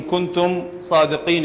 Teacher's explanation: الميم مع الصاد حكمها الإظهار